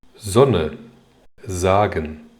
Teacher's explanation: 当▁S▁处于词首，并且位于元音前时，读浊音▁z。